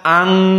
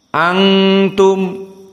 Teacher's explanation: Di saat masuk ta menjadi ikhfa. Makhraj dari lisan berubah menjadi khaysum. Jadi dibaca ang, hidung sekarang.